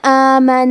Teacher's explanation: کلمت آمنہ میں الف پہ کھڑا زبر ہے تو یہاں مد الف ہے، ہم مد الف کو ظاہر کریں گے۔